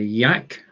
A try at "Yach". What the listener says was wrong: No, it's a CH. Yach.